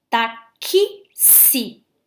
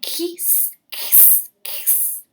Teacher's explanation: Porque o X, ele tem 2 sons, ó. Taxi. Tem o som do Kzinho e do Szinho.